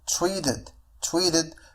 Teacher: فهنا نفس الشيء لدينا flap t أي أن t سوف تنطق على الشكل d